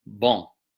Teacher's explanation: N in the writing of French represents a pure nasal in that context.